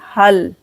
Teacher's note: हा को यहाँ पर मिलाएंगे लाम के साथ, हा लाम जबर हल।